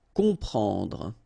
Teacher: You've got OM, and after that you've got a consonant, so you will get the sound on, nasal, okay? You don't hear any M here, okay? It's on.